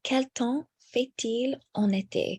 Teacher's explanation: So here with fait-il, we also carry the T for the next word, which begins with a vowel.